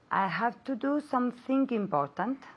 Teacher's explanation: Link the G with the I.